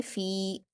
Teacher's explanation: फा पर या मद्दा है, 2 हरकत खींचेंगे